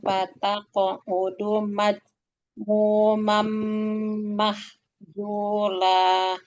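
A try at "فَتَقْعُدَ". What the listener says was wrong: Ya, sekarang diulang dari fataq'uda, bukan na'udu tapi uda.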